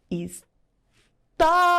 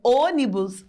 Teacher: Quando a letra O recebe o acento agudo, o som fica bem aberto. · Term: som aberto